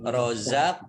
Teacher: Qaf sukun bacaan qalqalah ya dibaca memantul